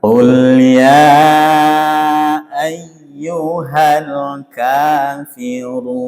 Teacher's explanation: qofnya tebal qof-nya dibaca agak dalam bukan kul seperti kaf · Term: qafnya tebal